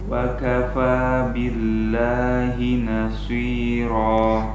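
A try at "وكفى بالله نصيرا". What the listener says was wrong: Shotnya jangan monyong sehingga bunyinya seperti su, ya. Tebalnya itu memang tebal, cuman tebalnya tidak pada tebal yang bagus, ya. Tebal yang ditebalkan dengan cara yang tidak benar. Kemudian akibat dari monyong tersebut bunyi sofirnya jadi hilang. Su, ya, su, so. Harusnya desisanya harus maksimal. Caranya jangan monyong.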